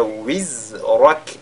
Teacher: Et wizrak, pas wizrak, ne sera pas bien, mais wiz, n'est-ce pas, wizrak, et le ra, lu avec at-tafkhim, le kaf avec al-hams